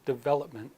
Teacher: when I say development you hear the stress on the second syllable development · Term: word stress